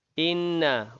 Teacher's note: wajibul gunnah, dua harakat dengung